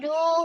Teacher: অ সাকিনের ডান দিকে পেশ, তাই একে অ মাদ্দা বলা হয়, অ মাদ্দাকে একালি পরিমাণ টেনে পড়তে হয়